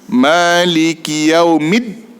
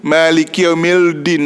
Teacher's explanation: Tu alif lam syamsiah. Alif lam syamsiah, maka dia ada sabdu untuk hilangkan bunyi lam.